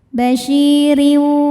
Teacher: karena ada ya sukun didahului kasrah maka syin panjang dua harakat